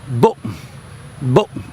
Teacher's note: it's very abrupt. It's not elongated at all. It's a very abrupt sound